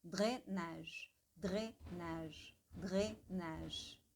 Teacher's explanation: dre, é quase como se a língua inteira encostasse no céu da boca